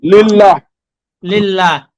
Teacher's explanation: এই লামের নিচে জের থাকার কারণে আমরা এই লামকে চিকন করে পড়তেছি